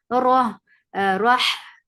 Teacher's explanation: Na for fatha upon jaws, the sound is short. Rah for fatha upon jaws, give takrar in ra, moderate takrar, not too long.